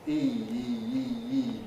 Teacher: you could justifiably classify E as a kind of diphthong